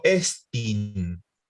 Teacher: Acá tenemos otra palabra que tiene el espíritu y el acento sobre la eta o la ita, estin. Entonces, como yo tengo el acento en la E, digo estin